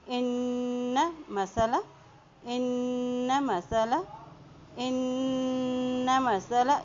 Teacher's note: نون پہ شد ہے، یہاں پہ غنہ ادا کرتے ہوئے پڑھیں گے